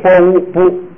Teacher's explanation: 爬是低调送气的，在这个后第二个音节变成高调，而且变成不送气 ，变成啵，所以啵乌不，这是成了不了。注意这个地方还有一个规则，不这个写不就啊是闭元音，前边那个麻呢是开元音，碰到一个是闭元音的时候，另一个开元音就不用读得太开，只要闭一点，啊要变成所以现在这个麻呢就读么，就是抹不，抹不，抹不，麻是母亲，仆是儿子，抹不就是母子。这个藏文组词很好组的，它好多就是字直接组，就跟咱们汉字差不多，两个字组起来就是一个意思。这个不是像那个其他语言要弄一大串这个拼起来的单词，它就是跟那个汉字组合意思差不多。注意啊，下边说特殊情况了，这是符合规则的情况。特殊情况就是什么呢？如果这